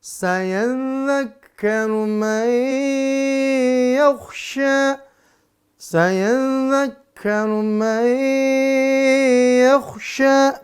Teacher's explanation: ada tasdid dha dan ka. Dha dan kaf. Maka pastikan ketemu di mana makhrajnya. Lalu setelah itu ditekan dan ditahan di makhraj huruf dha dan ka.